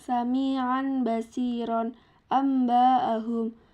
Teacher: ikhlf ikhlf adalah nun sukun atau tanwin bertemu dengan huruf ba cara membacanya mengganti nun sukun dengan mim sukun dan disertai ghunah